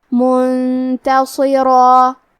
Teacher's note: ہمیں حرف الرا کو اور اس کے بعد مد الف کو دونوں کو بھاری آواز میں پڑھنا ہے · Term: تفخیم